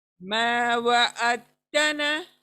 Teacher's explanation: दाल की साउंड बिल्कुल नहीं आएंगी।